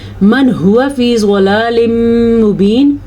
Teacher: ہوا ہا کے مخرج کو چھاتی سے نکالنا ہے · ضلال مبین میں بھی ادغام بالغنہ ہو رہا ہے تو یہاں پہ ہر حال میں غنہ کرنا ہے